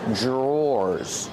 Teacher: are called drawers the pronunciation is not like the spelling pronunciation Dr makes a j sound J J plus the r together